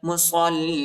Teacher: صاد کو لام کے ساتھ ملائیں گے، لام پر جو ہے شد آیا ہے، سختی کے ساتھ شدت کے ساتھ پڑھیں گے